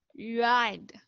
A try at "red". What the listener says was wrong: No, you're saying ride. No, red, eh, red.